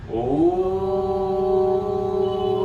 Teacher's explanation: ओम का उच्चारण करेंगे लंबा, लंबी गहरी श्वास लेंगे। ओ, जब ओम का उच्चारण करें तो होंठ को गोल बना ले और ओ ही करते जाए, मां पे जाके बंद कर देंगे और इसको फिनिश कर लेंगे।